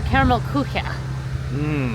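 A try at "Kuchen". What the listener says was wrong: You put a lot of syllables in there.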